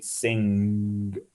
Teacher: you are combining two sounds that come from two very different parts of the mouth the n is way up front and the g is way up back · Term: the funny n, funny n